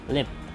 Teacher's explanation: This has one form at the beginning of a word and another form at the end. In a word such as lip, the first consonant is a clear L.